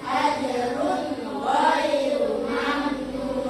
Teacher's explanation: Oke, ajrun ghairu itu dibaca jelas. Nah, jelas huruf setelah nun sukun tanpa perubahan. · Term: bacaan izhar